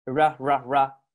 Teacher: R sound doesn't exist. And it sounds a bit like English L.